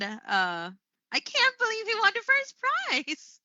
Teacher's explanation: I have used the rising intonation